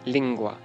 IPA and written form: lɪŋgʷa (lingua)